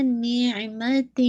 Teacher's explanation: آئین کی آواز واضح ہو، نوٹ جھٹکے کے ساتھ نہ ہو